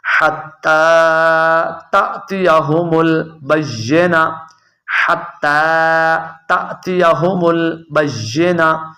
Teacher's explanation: تا کے آگے حمزہ آ گیا تو آپ نے اسے جھٹکا دے کر پڑھنا ہے